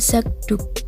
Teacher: Ketika kedua kata itu digabung sehingga menjadi kata zakduk yang berarti sapu tangan diucapkan zakduk. Bunyi K pada zak berubah menjadi G. Velar bersuara karena dipengaruhi oleh bunyi D yang mengikutinya. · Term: asimilasi